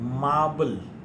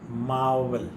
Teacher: we can explain to them that b is a bilabial and v is labiodental